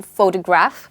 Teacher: you stress on the ‘pho’ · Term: word stress